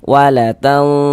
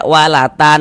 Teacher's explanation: cara membaca ikhfa hakiki itu dibaca samar. Jadi bunyi nun sukunnya itu kita baca samar. Dengan bersiap-siap masuk ke dalam huruf ikhfanya.